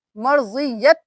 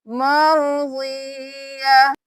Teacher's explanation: یہاں پہ ہم صرف ہا کی آواز نکالیں گے، نہ ہی 2 زبر پڑھیں گے، نہ ہی تا کی آواز آئے گی۔ جب بھی یہ والی جو گول والی تا ہے اس پہ وقف ہوگا تو یہ تا کی آواز نہیں ہا میں بدل جائے گا تا، تو ہم یہاں پہ صرف ہا کی آواز نکالیں گے، مرضیہ۔